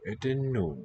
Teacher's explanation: that's not a voiceless N. That's a cluster, a sequence of those two sounds.